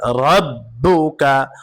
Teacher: রয়ের উপরে জবর অথবা পেশ থাকলে রকে পুর করে পড়তে হয় অর্থাৎ মোটা করে পড়তে হয়